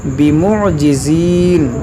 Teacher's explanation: میم ساکن کے بعد یہاں با ہے اخفاء شفوی تو یہاں غنہ کریں گے